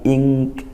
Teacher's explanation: izhar wal ilgam tidak jelas nunnya tidak benar-benar jelas in tapi tidak juga ee masuk gitu ya tidak ik tidak masuk ke kaf tapi ing masih ada nunnya sedikit dan juga samar-samar masuk ke huruf kaf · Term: Ikhfa haqqiqi